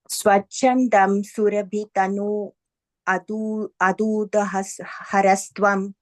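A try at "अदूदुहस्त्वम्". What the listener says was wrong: There's no ra there. Aduduhastvam. Okay, so there's no ra there.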